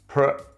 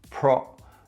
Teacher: in the first syllable we have /pre/ not /pro/